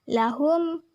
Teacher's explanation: huruf mim sukun bertemu dengan huruf ain. Cara membacanya dengan jelas. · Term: idhar safawi